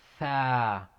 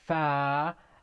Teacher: The tongue is sticking out for tha, but for fa, the tongue is staying inside.